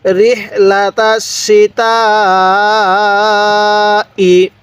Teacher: এই তায়ের মধ্যে আমরা 4 আলিফ টান দিব। কেন? মদের হরফের উপর এইরকম মোটা ছুরি চিহ্নটা থাকলে, এরপরে যদি এরকম গোল হামজা থাকে তাহলে সেখানে আমরা 4 আলিফ টান দিব।